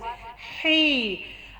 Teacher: جیسے کہ میں نے آپ کو بتایا کوئی بھی حروف کے آگے یا آ جائے تو ہم نے اس کو تھوڑا سا لمبا کرنا ہے ہی، اور اس ہا کو گلے سے نکالنا ہے واضح